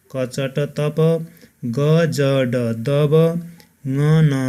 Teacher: त्यसैगरी अल्पप्राण भनेको फोक्सोबाट सास बाहिर निस्कँदा सासको मात्रा वा झड्का कम आउने स्थितिमा उच्चारण हुने व्यञ्जन वर्णहरू नै अल्पप्राण हुन्